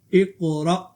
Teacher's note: حمزہ قاف زیر اقو، قاف پہ قلقلہ، اقو، را حمزہ زبر را، اقرا، قاف پہ قلقلہ کریں اور را کو جرک یعنی جھٹکا دے کر پڑھیں